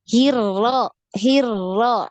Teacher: Jadi sekali aja getarnya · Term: huruf ro